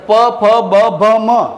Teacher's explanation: ત્યારે તમારા હોઠ એક હોઠ ને બીજો હોઠ સ્પર્શે છે · તો તમારા હોઠ બે ભેગા થાય છે જ્યારે તમે આનું ઉચ્ચારણ કરો છો ત્યારે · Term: ઓષ્ઠ્ય, ઔષ્ઠ્ય